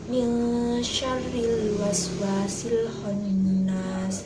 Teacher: Salah satu contoh bacaan ikhfa hakiki yang terdapat dalam Al-Quran yaitu terdapat dalam surat An-Nas ayat 4 yang berbunyi min syarril waswasil khannas. Min syarril harus disamarkan dan mendengung selama 2-3 harokat.